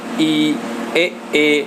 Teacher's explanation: अग्र स्वर जो अगले भाग से बोले जाते हैं